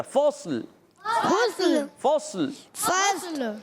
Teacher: صاد موٹا رکھنا ہے, لام باریک, اور صاد کو ہلانا نہیں, لام کو بھی نہیں ہلانا.